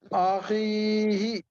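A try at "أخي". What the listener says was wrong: آخی ہی نہیں پڑھیں گے, اخی جہاں جہاں بھی قرآن کریم میں ایسا آئے یا ساکن سے پہلے زیر یا الف سے پہلے زبر, تو اس جگہ کھینچ کر کے پڑھی.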